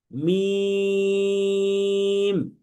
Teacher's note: কিন্তু এই শুকনা অংশটাকে এখানে আমরা মিলিত দেখতে পাচ্ছি, শুকনা অংশ। তাহলে দুই ঠোঁটের যে শুকনা অংশটা আছে, এই শুকনা অংশটাকে যখন আমরা মিলাবো, তখনই উচ্চারিত হবে মিম